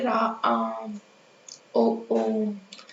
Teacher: प्लुत स्वर में क्या होता है कि ध्वनि की आवृत्ति जो होती है वो लगातार बढ़ती जाती है। और इनके उच्चारण मतलब को बोलने में ह्रस्व स्वर से तीन गुना ज्यादा टाइम लगता है। · इनको बोलने में ह्रस्व स्वर से 3 गुना ज्यादा टाइम लगता है।